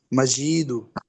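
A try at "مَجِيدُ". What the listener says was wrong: মাজি টান হবে না, হরকতের উচ্চারণ তাড়াতাড়ি পড়তে হয়, যেমন মাজিদু। হুম, এভাবে আর কি, মাজিদু।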